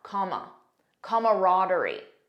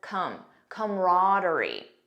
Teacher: notice the first pronunciation has an extra sound comma camaraderie the second one just says come camaraderie